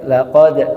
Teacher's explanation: jangan kita naikkan suaranya pada lam tapi pada qofnya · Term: intonasi